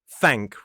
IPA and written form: θæŋk (thank)